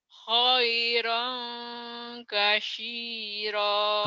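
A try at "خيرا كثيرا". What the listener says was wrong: kasih bukan kasih lidahnya digigit ke deh ini ingatnya titiknya aja 3 iya titiknya 3 tapi lain lagi nih kasiro buntut kasiron kasiro khairan kasiro coba ulang khairan kasiro kemudian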